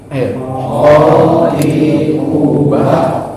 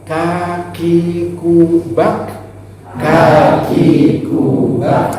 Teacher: Qafnya lebih dalam, kafnya di luar, gitu. Kaf.